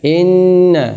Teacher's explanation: inna guna musyaddadah, 2 harokat berdengung, 2 harokat ditahan